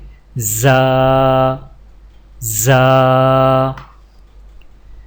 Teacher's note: زا کی ادائیگی میں زبان کی نوک کو سامنے والے نیچے کے 2 دانتوں کے کناروں سے مضبوطی سے لگا کر باریک اور سیٹی جیسی آواز میں پڑھیں